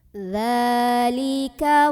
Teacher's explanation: Yaf'al dha mad tabi'i karena ada dzal yang berbaris fathah berdiri. Cara membunyikannya dipanjangkan dzalnya 2 harokat saja.